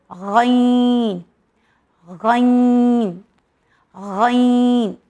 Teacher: غین غین یہ بھی حرف حلقی ہے اور یہ بھی ہیوی لیٹر ہے، جس طرح سے خا، کھا، کھا، اسی طرح سے غین غین غین یہ ہیوی لیٹر ہے جو ہمارے حلق کے فرسٹ پارٹ سے نکلتا ہے، غین غین غین۔